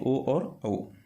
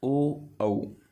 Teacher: ओ, औ मतलब कंठ और होठ, जो अपने होठ हैं उनसे बोला जाता है। इनको कंठोष्ठ कहा जाता है।